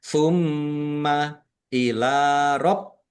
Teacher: Mim tasdid dibaca ghunah, dibaca mendengung, ditahan biar tampak mendengung. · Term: gunnah